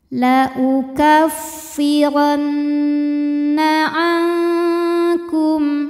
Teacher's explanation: Cara bacanya dengung. Jadi bunyi n tahan sampai ada suara masuk hidung kurang lebih 2 harokat. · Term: gunnah musyaddadah